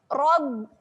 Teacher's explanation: tahan pada huruf ba, rapatkan bibir.